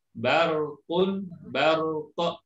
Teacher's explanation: Ra-nya tetap jelas, kemudian qaf-nya juga jelas, termasuk qalqalahnya.